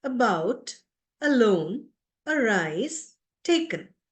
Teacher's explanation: then we have an inverted e which is a short sound short a sound which is not very prominent you can hardly hear it